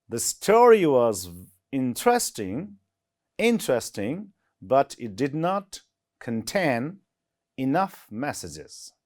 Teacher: stress on the second syllable in contain, second syllable in enough